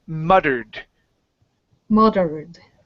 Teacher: So when you have a double T that's surrounded by vowels and there isn't an N at the end of the word, we can pronounce a flap T here. So it's going to be muttered.